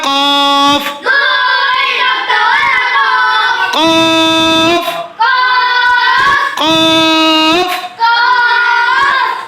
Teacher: জিহ্বার গোড়া তার বরাবর উপরের সঙ্গে লাগিয়ে দুই নক্তাওয়ালা কফ